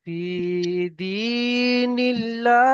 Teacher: আল্লাহ শব্দের লামকে বারিক, আল্লাহ শব্দকে বারিক করে পড়তে হবে